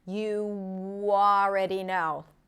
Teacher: the W sneaks in to help me connect the ooh sound with the a sound. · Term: intrusive sounds